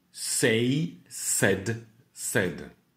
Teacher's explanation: Pour le prétérit et le participe passé, pas de diphtongue.